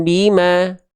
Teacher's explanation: iklab itu membalik bunyi nun sukun ke bunyi mim sambil disamarkan ya dan dengungkan.